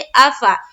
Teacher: हमजा और फा दोनों के ऊपर जबर की हरकत है, जबर को जल्दी पढ़े, थोड़ा भी ना खींचे